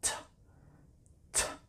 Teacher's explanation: if the final sound of the verb is unvoiced, for example, s, that S sound in miss and pass, then when you add ed, it always sounds like t